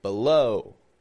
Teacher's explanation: the first syllable B has the schwa sound the second syllable low is stressed it's strong